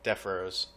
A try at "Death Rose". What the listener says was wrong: Death Rose or Def? Death Rose. Because the way you're saying it is Rhode Island. You're like Def Rose.